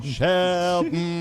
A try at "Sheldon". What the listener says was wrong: And agree, Mike, that it's best if you don't say that last O. It's just Sheldon. Sheldon.